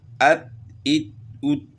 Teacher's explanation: 2 باتیں ہیں اس میں، اور دال میں قلقلہ کرنا ہے، تا جو ہے نا باریک پڑی جائے گی